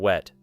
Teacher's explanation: To produce W, the teeth should not touch the lower lip because both lips move forward and become rounded, almost as if you are preparing to blow out a candle, and the sound begins by moving quickly from this rounded shape into the following vowel.